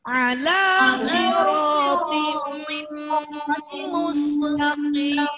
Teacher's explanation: Ini kan tin. Ketemu mim. Hilang tinnya langsung tim. 2 ketukan.